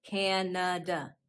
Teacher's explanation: Notice how in Canada, the second syllable is a schwa